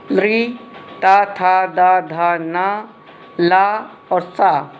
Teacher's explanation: ये दंत है, इसको दंते कहते हैं।